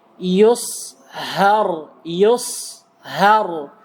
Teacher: karena ha huruf tipis maka tidak boleh ditebal ditebalkan